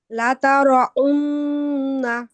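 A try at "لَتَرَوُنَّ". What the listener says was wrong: আপনার ওয়াওটা গলা থেকে আসতেছে, ওয়াও গলা থেকে আসে না। লা তার উন্না, উন্না হবে না, লা তার।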